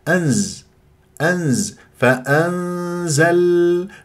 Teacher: نون مع الزاي اخفاء اروح الى مخرج الزاي